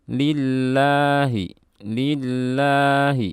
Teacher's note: Jangan menambah tekanan pada huruf lam bertasydidnya.